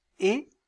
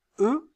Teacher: Quand je prononce et, mes lèvres sont étirées. Lorsque je prononce eux, vous sentez qu'elles sont arrondies.